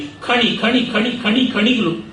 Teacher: ಆ ಮಹಾಪ್ರಾಣ ಖ ಮತ್ತೆ ಮೂರ್ಧನ್ಯಾಕ್ಷರದ ಅನುನಾಸಿಕ ಪ್ರಯೋಗ